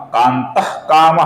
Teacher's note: उसी प्रकार विसर्ग के आगे जब क आता है दोस्तों तो विसर्ग का हल्का सा ख ऐसा उच्चारण हम करते हैं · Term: अपूर्ण ख